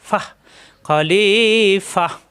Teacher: এই ফা মিলবে হা এর সাথে